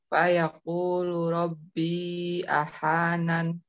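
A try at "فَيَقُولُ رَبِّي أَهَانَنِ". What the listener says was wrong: Ringankan, jangan ahanan.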